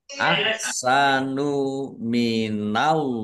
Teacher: Allahnya dibaca tebal karena harakat di depannya fathah. Allah lam fathah berdiri mad thobi'i.